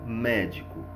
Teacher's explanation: Então, médico, a sílaba tônica é mé